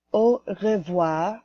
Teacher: that R is very quiet at the end of the word.